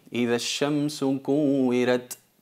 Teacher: evitar exagerar mucho en cuanto a la pronunciación de la letra ta, sobre todo cuando es sakina, porque se transforma casi en la letra sin